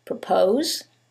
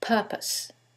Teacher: in the first one, it's the second syllable that's stressed, and in the second one, it's the first syllable, and that changes the pronunciation completely.